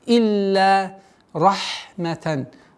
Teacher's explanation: четкое произношение огласовки кесра, удвоение, после удвоения долгота в размере двух огласовок фатха